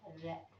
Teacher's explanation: इस वर्ण के उच्चारण में जीवा की नोक बेलन की भांति लुढ़क कर नीचे आ जाती है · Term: लुठित व्यंजन